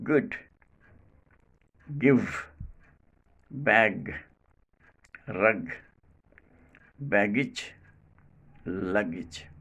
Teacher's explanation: The sound is not aspirated in any position · Place of articulation, velum. Manner of articulation, plosive. Quality, voiced. This sound is called velar voiced plosive.